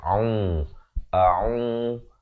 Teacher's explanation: InsyaAllah kita mulakan hamzah itu makhrajnya di pangkal kerongkong a. Ain di pertengahan kerongkong dengan baris dhammah 2 harakat